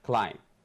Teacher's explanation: so we don't pronounce the B